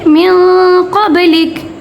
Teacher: وقف کریں گے تو کاف کی زبر ساکن میں بدل جائے گی. اور میاں قبلیکا کو ہم کیسے پڑھیں گے، میاں قبلک، ٹھیک ہے، وقف ہو جائے گا.